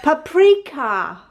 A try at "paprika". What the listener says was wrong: Ka. It's a K. Paprika.